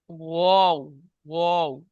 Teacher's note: ওয়াও, ওয়াও, মাঝখানে ফাঁকা আছে, দেখেন, ওয়াও। 2 ঠোঁট না মিলিয়ে মাঝখান হতে উচ্চারিত হয় ওয়াও, ওয়াও। ওয়াও এর মাখরাজ 2 ঠোঁট না মিলিয়ে মাঝখান থেকে উচ্চারণ হবে।